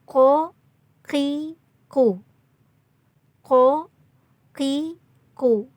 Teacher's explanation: Ko ini cara pengucapannya dari tenggorokan bagian bawah. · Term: qaf